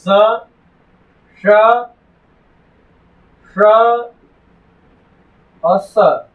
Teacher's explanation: वो बोलेगा ताल वाला स, तालव्य स, मूर्धा वाला स, मूर्धन्य स, दंत वाला स, दंत स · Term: ऊष्म व्यंजन